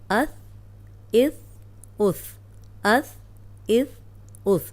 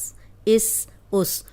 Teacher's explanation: اوپر سامنے والی جو 2 دانت ہیں ان کے کنارے پہ زبان رکھ کے ادا کریں گے تو سیٹی کی آواز نہیں آئے گی۔